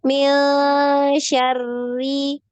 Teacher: Jadi nanti dilatih ya untuk ro-nya tadi ya. Jangan terlalu banyak ya getarannya, dikurangi. Tadi sekali aja Ya. ya, getarannya sekali aja.